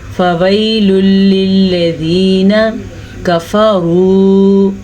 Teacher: लाम के ऊपर है दो पेश, इसे कहते हैं नून तनवीन, क्योंकि दो पेश को नून तनवीन कहेंगे। नून तनवीन के बाद लाम या रा आ जाए तो वहाँ पे इदगाम बिला गुन्ना होता है, यानी कि गुन्ना किए बगैर हम पढ़ लेंगे इसको